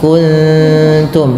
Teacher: Membaca ikhfa itu suaranya disamarkan kepada makhrajnya ya, bukan kuntum tapi kuntum, sesuai makhrajnya. Ta itu tipis sehingga nunnya samarkan ke huruf ta